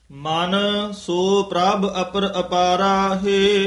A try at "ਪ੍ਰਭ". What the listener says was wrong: ਪ੍ਰਭ ਭੱਬੇ ਨਾਲ ਬੋਲਣਾ ਹੈ, ਬੱਬਾ ਨਹੀਂ ਲਾਉਣਾ।